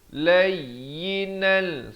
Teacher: idgham bila gunnah, tanwin bertemu lam